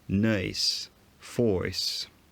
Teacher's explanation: instead of having a very central off glide like rp near square they have quite a high off glide